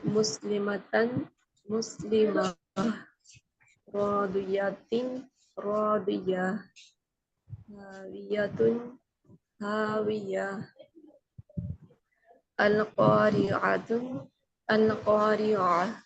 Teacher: عربی میں جب گول تا آتی ہے تو وقت کے لیے ہم اس کو ہاں میں بدل دیتے ہیں اور اس کے اوپر سکون لگا دیتے ہیں